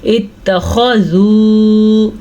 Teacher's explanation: خاء کو پر پڑھنا ہے کیونکہ خاء حروف مستعلیہ میں سے ہے۔ اگر اس کو پڑھیں گے ہم اتخذوا، ہم نے اس کی خوبصورتی نہیں ادا کی، خوبصورتی ہوگی خاء کو پر کرنے سے، اور اسی کو تجوید کہتے ہیں۔